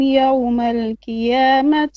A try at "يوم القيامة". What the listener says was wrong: أعمالهم فلا نقيم لهم يوم القيامة not قيامة وزنا. It's not قيامة not كاف. يوم القيامة قاف.